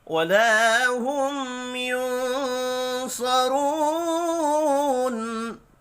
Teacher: میم ساکن کے بعد یا ہے، یہاں بھی اظہار شفی ہوگا، غنہ نہیں ہوگا۔ نون ساکن کے بعد صاد ہے، اخفاء حقیقی ہوگا